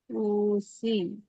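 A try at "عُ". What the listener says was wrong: উ সি উ ও পেশ উটা একটু টান হয়ে যাচ্ছে, খেয়াল করবেন, টান হবে না। উসি আ। উসি।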